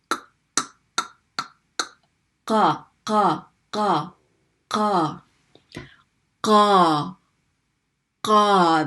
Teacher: And what the back of the tongue is going to do is it's going to close off against your throat, and it's going to close off the air in your throat · the qaf is pronounced by the very back of the tongue. Okay? The very, very back of the tongue.